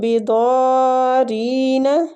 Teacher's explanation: دعاد بھی مستعلیہ حروف ہے، پور پڑھیں گے اور کھینچیں گے اس کو مد کی وجہ سے. بضارین، آگے بھی یا مد ہو رہی ہے.